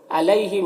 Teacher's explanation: یہاں پر یا ساکن سے پہلے لام کے اوپر زبر ہے تو یا لین ہوگا، اسے نرم آواز کے ساتھ جلد پڑھتے ہیں